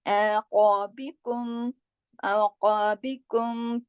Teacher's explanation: मीम के कायदे शफवी कहलाते हैं, शफतान की वजह से अरबी में होठों को शफतान कहा जाता है। तो मीम साकिन के बाद चूंकि फा आया, तो इसकी वजह से हमने यहाँ पे इजहार शफवी किया।